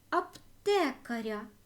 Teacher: закінчення я ар не наголошено тому це м'яка група Аптекар аптекаря наголосна е ар ненаголошене